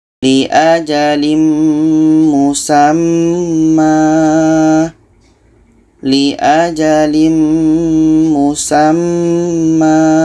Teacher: Seterusnya dalam surah Az-Zumar ayat 5, di sini kita bertemu dengan tanwin atas pada akhir bacaan. Ini adalah mad iwad. Maka ma ini kita panjangkan 2 harakat.